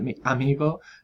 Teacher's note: cuando es vocal más vocal mi amigo y hacen ese golpe de glotis